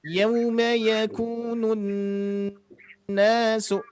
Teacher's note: Nah, cirinya adalah domah bertemu wawu. Terus nun bertasydidnya ditahan